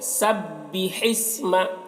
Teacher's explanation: سبی با میں تشدید ہے، سختی کے ساتھ اسے پڑھیں گے۔ سبح اسم، ہا کو حلق سے ادا کریں گے اور ہا کو سین سے ملا کر پڑھیں گے